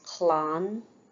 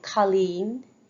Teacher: so it's like an O for a broad l and an uh for a slender L now that is exaggerating it it's a very subtle difference for